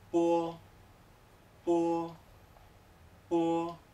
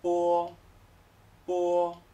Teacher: es como si hubiera un comienzo de U muy ligero, y luego ya voy hacia la O. · La O se pronuncia como en español, solo que suena, antes del sonido O, suena como una pequeña U. Veréis, muy pequeñita.